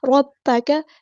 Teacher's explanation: ربک را ہمارا ہیوی لیٹر ہے، با مشدد ہے تو اس کو اچھے سے ادا کرنا ہے، کاف باریک پڑھیں گے اور کاف کی زبر کو لمبا نہیں کریں گے